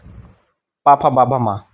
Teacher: अब प वर्ग की बात करें ये ओठ से होता है। प फ बाबा मा ओठ दोनों हमारे कंपन कर रहे हैं।